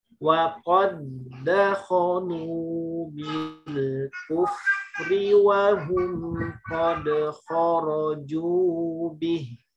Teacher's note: Jangan dibaca waqad dakhulu, tapi langsung dileburkan ke dal kedua.